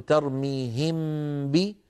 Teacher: ما هو باظهار لان المخرج ارتفع ارتفاعه واحده عن الحرفين وما هو بادغام لان الميم بقي صوتها مستقلا عن الباء فهو يشبه الاظهار من جهه ويخالفه ويشبه الادغام من جهتين ويخالفه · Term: اخفاء